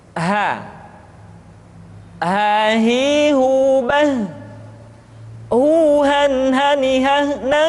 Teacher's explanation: huruf ha dikeluarkan dari tenggorokan yang terjauh. Sama seperti kita mengucapkan huruf A.